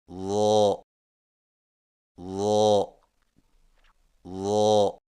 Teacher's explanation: ضا کی ادائیگی میں زبان کی نوک کو سامنے والے اوپر کے دو دانتوں کے اندرونی کناروں سے نرمی سے لگا کر اور زبان کے پچھلے حصے کو تالو کی طرف بلند کرتے ہوئے موٹی آواز میں پڑھیں